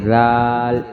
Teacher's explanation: دانتوں کے درمیان میں زبان کی نوک آئے گی، نرمی سے، زال۔ جس طرح ہم سا پڑھتے ہیں اسی طرح زال پڑھیں گے نرمی سے، اسی جگہ سے زال ادا ہوگا جہاں سے ہم سا پڑھتے ہیں۔